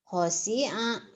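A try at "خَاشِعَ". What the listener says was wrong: Khosyi'a. Shin.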